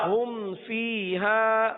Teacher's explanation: اب یہاں پر میم ساکن کے بعد نہ با ہے نہ میم ہے. با اور میم کے علاوہ کوئی بھی حرف آ جاتا ہے تو اظہار شفوی ہوتا ہے، لہذا یہاں پر گننا نہیں کریں گے